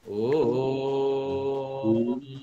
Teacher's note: श्रुति मधुरता के लिए प्लुत तर इसका उच्चारण होना चाहिए, थोड़ा लंबा होना चाहिए, तभी इसमें श्रुति मधुरता आती है।